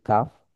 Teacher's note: এই ফুটানিটা এখানে হবে না। কাফের মধ্যে এটা একদম পাতলা। স্বাভাবিক ক এর মতন। এই যে বাংলাতে বলি কাফ।